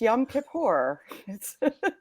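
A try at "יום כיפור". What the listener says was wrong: The accent is on the kip. It's Kippur.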